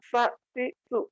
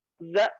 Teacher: Jadi bisa jadi tempat keluarnya sama, tapi sifat yang berbeda. Sa, s, sa dengan za itu sama, tapi bedanya kalau za tidak mengeluarkan nafas. Za, ya, tidak mengeluarkan nafas, lalu kemudian sin mengeluarkan nafas.